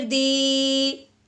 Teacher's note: اب ہمیں دال کو یا ساکن کے ساتھ ملانا ہے تو ایک الف کے برابر لمبا بھی کرنا ہے